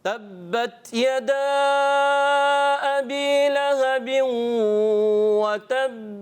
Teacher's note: آخر کی جب با کی ادائیگی ہو اس کے ساتھ ہا کی ملاوٹ نہ ہو جائے، یعنی وتب ایسا نہیں ہونا چاہیے، وتب با کی آواز۔